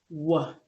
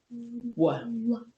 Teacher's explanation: your lips have to come forward and then they have to retract back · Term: W sound